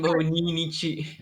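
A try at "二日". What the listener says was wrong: It's not nichi. I told you, but you remember what I told you? The first until the 10 have a special way of reading it. So Futsuka.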